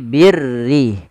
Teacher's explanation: huruf ra yang dibaca dengan tipis, yaitu ra tarqiq, yang dimana huruf ra-nya berharakat dengan berharakat kasrah